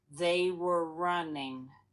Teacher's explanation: Can you hear how the were just reduces?